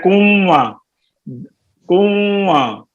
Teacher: یہ ناک میں آواز چلی جاتی